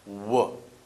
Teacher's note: we have our tongue approximately in the middle of our mouth not causing any vibration with any other vocal organs